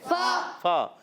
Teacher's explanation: تو پیارے بچوں اور مدنی چینل کے ناظرین، یہ شاید کہ ہم قواعد کو سمجھنے کی کوشش کرتے ہیں۔ فا، فا کا مخرج ہے اوپر والے دانتوں کے کنارے، جب نیچے والے ہونٹ کے تر حصے سے لگتے ہیں تو ادا ہوتا ہے فا